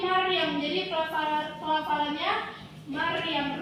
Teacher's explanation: Rohnya itu tebal ya, rohnya lebih jelas nampak. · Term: tafkhim